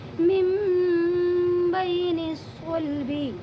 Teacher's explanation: یہاں پر بھی نون ساکن ہے، یہ نون ساکن کے بعد اقلاب کا ایک حرف با ہے، وہ با آیا ہوا ہے، اسی لیے اس نون کو کی آواز جو ہے اس کو میم میں بدل دیں گے، میم میم زیر میم، میم میم بین الصلبی، میم بین الصلبی۔ اس نون کی جو آواز ہے یعنی میم کی جو آواز ہے یہ تھوڑا سا ناک میں لے جائیں گے، غنہ اور اخفا کے ساتھ دونوں کے ساتھ پڑھیں گے، میم بین الصلبی۔